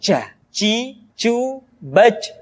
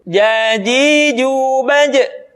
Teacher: Ja, ci, cu, baj. Padahal kalau kita melihat sifat yang dimiliki huruf Ja, dia tidak boleh mengalir nafas. Karena sifatnya al-jahar, lawan dari al-hamas.